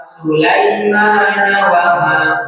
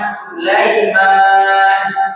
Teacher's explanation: Kalau lanjut cuman dua harakat jadi madi. Tapi kalau berhenti diwakafkan Sulaiman panjang jadi empat atau lima harakat